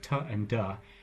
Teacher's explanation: a lot of important sounds like t and duh are made with the tongue and the alveolar ridge right here.